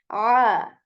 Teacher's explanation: this Ain comes from the middle portion of throat. This is different than this Hamza or A of English.